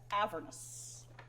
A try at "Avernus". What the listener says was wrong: Avernus. wrong emphasis on the wrong syllable.